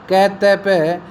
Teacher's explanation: अ घोष अल्प प्राण स्पर्श जो थे मूल भारोपीय भाषा के क त प